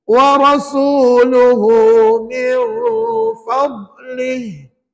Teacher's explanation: Dia tak boleh guna hujung lidah. Nak sebut dhad, guna sepanjang tepi lidah. Kiri atau kanan, tekan pada gigi.